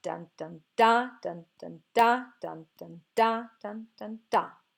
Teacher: Then the 2 basic types when you have 3 syllables per foot are the anapest and the dactyl. So the anapest has 2 unstressed syllable followed by 1 stressed syllable